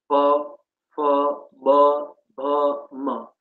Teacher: તમે પ બોલો, તમારે હોઠ ભેગા થશે, બંને ઉપરના અને નીચેના હોઠ ભેગા થશે. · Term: ઔષ્ટ્ય